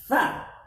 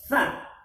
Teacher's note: Tha-thau, gigit ujung lidahnya.